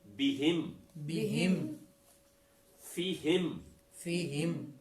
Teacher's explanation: तो हा के नीचे जेर है और मीम के ऊपर जज्म है, तो मीम हिम के साथ यानी हा की आवाज के साथ मिलेगी। और नीचे चूंकि जेर है, याए मारूफ की है, तो इसलिए इसको पढ़ेंगे बिहिम, बिहिम।